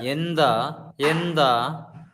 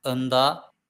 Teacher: A is 1300, around 1300, and it is a retracted vowel